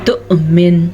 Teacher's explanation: جب کبھی واو کے اوپر حمزہ آ جائے تو حمزہ ہی پڑھی جائے گی، نہ کہ واو، اور یہاں پہ حمزہ پہ ساکن ہے تو یہ حمزہ جھٹکے کے ساتھ پڑھی جائے گی